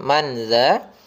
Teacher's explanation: tatkala adanya tanwin bertemu dengan dzal maka dia disamarkan didengungkan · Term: Ikhfa